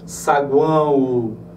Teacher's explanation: Reparem que saguão nós temos, ó, o semivogal, vogal e semivogal. Esse O acaba se comportando como se fosse uma semivogal. · a corrente de ar, ela predominantemente sai pelas fossas nasais. Então eu tenho um tritongo nasal.